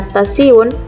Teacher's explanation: pada kata stasiun, bunyi T itu dilafalkan sebagai bunyi T laminoalveolar. Perubahan bunyi hambat apikoalveolar T menjadi bunyi hambat laminoalveolar adalah karena pengaruh secara progresif dari bunyi geseran laminopalatal S. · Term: asimilasi progresif